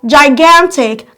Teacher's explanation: Your stress is on gan. So you have to stress the syllable gan because it's the syllable received the loudest stress.